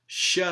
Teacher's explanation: the non-anterior sha sound that's made with a constriction extending backwards from the alveolar ridge into you know some part of the palatal region and the